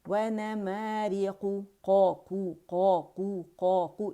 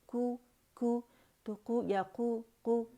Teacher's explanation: قو اس کی موٹائی کو قائم رکھیں گے. بعض اوقات ہم کیا کرتے ہیں, زبان کی جڑ نہیں اٹھاتے بلکہ ہم کہتے ہیں کو تو کو یا کو تو وہ اس کی کیا موٹائی کم ہو جاتی ہے.